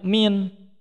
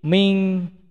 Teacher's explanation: Nah seharusnya itu dengung nih ikhfa itu.